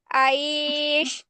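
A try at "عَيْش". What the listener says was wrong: রাইস যদি বলো তাহলে কিন্তু ইয়াই আবার জের শোনা যাবে, আইস বললে ইয়াই জের হয়ে যাচ্ছে সব। আমি কিভাবে বলছি দেখেন, খৌফ, খৌ খৌ, টানটা কিসে হবে? হ্যাঁ, টানটা কিস হবে? বাই আসবর, বাই, এই যে বাই বলতেছি না, বাই, এটাই মূলত টান হবে। বাইত, দেখছো আমি কিন্তু আলাদা করে ইয়াই জের নিয়ে আসতেছি না।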